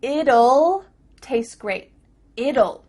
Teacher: when we say the contraction it will we kind of add a little u sound before the L it kind of sounds like ull so here we have two